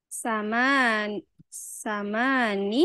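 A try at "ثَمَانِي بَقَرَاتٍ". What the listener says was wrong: ini ya agak panjangin.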